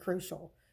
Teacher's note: you can hear that the accent is on the first syllable